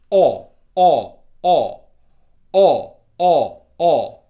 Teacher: look how rounded my lips are. O. My whole mouth is open. Okay, my tongue is back. It's coming from the back of my mouth. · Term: o sound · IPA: /ɒ/